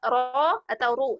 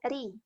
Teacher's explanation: ketika dia fathah dan dhammah, maka dia dibaca tafkhim, ro atau ru. Tapi ketika dia misalnya kasroh, maka dia dibaca tipis, ri